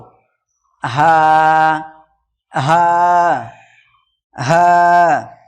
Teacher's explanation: হালাকের বা কণ্ঠনালীর শুরু হইতে উচ্চারিত হয় হা